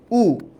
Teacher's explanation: উ মুখটা গোল হয়ে গেছে ঠোঁটটা ও গোল হয়ে গেছে